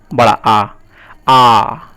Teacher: विवृत यानी full open, जब मुंह पूरा खुल जाता है। इन्हें निम्न स्वर भी कहते हैं।